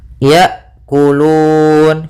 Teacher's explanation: Kemudian pada lafal hamzah harus jelas hamzahnya ya, karena hamzah sifatnya ada sifat syiddah dan sifat jahar, yaitu tertahannya nafas dan tertahannya suara